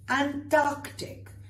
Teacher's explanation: Notice I'm saying the C's very clearly. Most people say Antarctic.